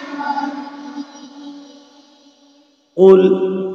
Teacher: ketika damah memonyongkan kedua bibir berbunyi u tidak O